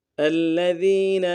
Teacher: ذال کو یا کے ساتھ ملانا ہے، ذال کو باریک ادا کرتے ہوئے یا مدہ کے ساتھ ملائیں گے، یا مدہ کو ایک مقدار میں کھینچیں گے، نون کو لم سے ادا کریں گے۔